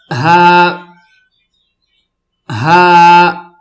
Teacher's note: بیچ میں سانس کی آواز نہیں ہوگی